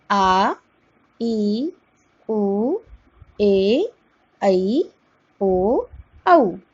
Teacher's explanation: दीर्घ स्वरों का उच्चारण करते समय ह्रस्व स्वर की अपेक्षा दुगुना समय लगता है, अर्थात इसका समय हुआ 2 मात्रा काल।